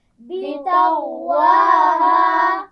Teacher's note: طا موٹا ہے اور آگے غین بھی اس کو ملائیں گے لیکن اس کی آواز کو موٹا رکھنا ہے